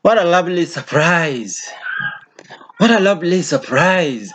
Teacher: the voice rises throughout · Exclamations also are characterized by a high pitch throughout. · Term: rising uh pitch throughout